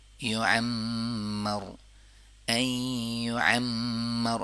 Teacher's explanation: میم کے اوپر تشدید ہے تو میم میں غنہ ہوگا